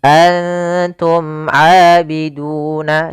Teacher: Dan di sini bertemu dengan huruf ain yang mana termasuk huruf izhar syafawi, maka dibaca dengan jelas suara mimnya. Antum abiduna tidak boleh ditahan antum a enggak karena dia izhar harus jelas.